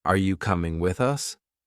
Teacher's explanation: The pitch goes up on you and peaks at coming, then drops on with us. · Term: rises and falls